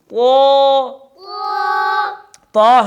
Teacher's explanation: زبان کی جڑ اور زبان کا درمیان دونوں اوپر تالو کی طرف اٹھیں